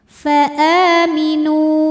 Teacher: ada waw sukun didahului dhammah, maka huruf nun panjang 2 harokat. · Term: matobi'i zahiri